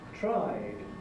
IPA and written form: traɪd (tried)